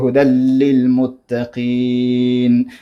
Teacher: اولان چون بغیر غنا دی کې غنا نه کیږي، ځکه لام او را کې غنا نه کیږي، ادغام کیږي